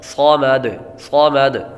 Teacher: صاد حروف مستعلیہ میں سے ہے اس لیے اس کو پر پڑھیں گے، اور جب آخر میں وقف کریں گے دال ساکن ہوگی، اور جب حروف قلقلہ ساکن ہوں تو ان میں قلقلہ خوب ظاہر ہوگا۔